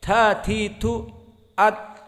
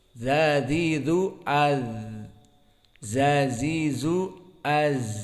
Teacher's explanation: Ta sifatnya dari segi hams keluar udara.